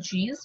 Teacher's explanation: so we see there is a blockage and then the slow release of air with the friction so that is called chill chair is an affricate in english